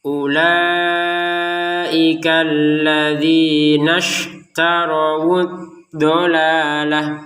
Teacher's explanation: hamzatul wasal itu ketika berada di antara dua kata dia enggak terbaca kalau memang dua kata ini mau disambung gitu ya. Kalau tidak disambung maka terbaca ya.